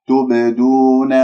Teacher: تبدون باء ساكنة مقلقلة قلقلة صغرى في وسط الكلام أحرف قطبة جد، وعندك التاء مضمومة قبلها والدال مضمومة بعدها، فأنت تقول تبدون أشممت الباء الساكنة ضمة وما قلقلت معك مضبوط، فأنت يجب أن تخلص هذه الباء من الضم، يعني راح يصير عندك ضم إرجاع ضم.